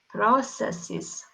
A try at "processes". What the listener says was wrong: Again, we will curl up the tongue a little bit more for R. Processes.